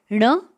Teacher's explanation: ण इस व्यंजन का उच्चारण स्थान है मूर्धा नासिका के साथ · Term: अनुनासिक